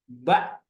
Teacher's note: Kalau hamzah begitu disukunkan suaranya terhenti.